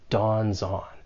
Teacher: You can link the final consonant sound in dawns with the vowel sound in on. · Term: linking